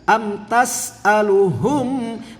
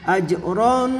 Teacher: mimnya harus jelas idhar syafawi nah jimnya jangan lupa qalqalahnya ya